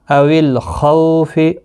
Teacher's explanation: او الخوف، خو واولین ہے، تھوڑا نرمی کے ساتھ ایک آدھے الف کی مقدار کے برابر کھینچ کر پڑھیں گے۔ خا مستعلیہ ہے، پر پڑھا جائے گا۔ او الخوف، خا کا خاص خیال رکھیں، پر ہے، حروف مستعلیہ ہے۔